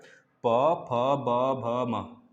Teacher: एक ऊपर एक नीचे ओठ, जब दोनों सटते हैं तो भाई प फ ब भ म निकलता है ना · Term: द्यो ओष्ठ